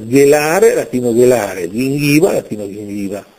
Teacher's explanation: La lingua sarda, non solo nel Logudoro, ma nella parte centrale dell'isola, mantiene il carattere velare della G, anche davanti a E e I.